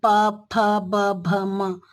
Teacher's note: उस तरह से प फ ब भ म, प वर्ग के जो व्यंजन है, इनको आप दोनों होठों को जब मिला के बोलेंगे तभी आप ये बोल सकते हैं